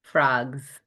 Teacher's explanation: Um but the point I want to make with this one too is that that s in spelling it's there in spelling but in saying it when we say it naturally three green frogs are on a log we make a z sound not a s sound. Do you know why >> does the G change our the way we move our mouth?